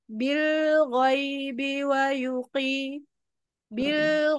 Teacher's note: lam itu punya sifat mengalir sebagian ya tawasut bainiah jadi bilbi wqi Bil gitu bilbi jangan terburu-burubi